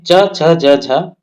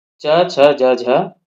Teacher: इनका उच्चारण जिह्वा के मध्य भाग से तालु में स्पर्श करके होता है। क्या बताया है कि इनका उच्चारण जो है जिह्वा के मध्य भाग से तालु में स्पर्श करके होता है। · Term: तालव्य वर्ण